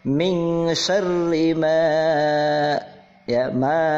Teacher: ini disebut mad tabi'i, dibaca panjang dua harokat.